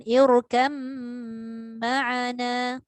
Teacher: Idgham ba sakinah dan mim hendaklah disertakan dengan gunnah dengan kadar 2 harakat.